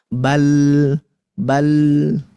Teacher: kalau kita baca huruf lam bal itu dia tidak mengalir dan tidak tertahan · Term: tawassut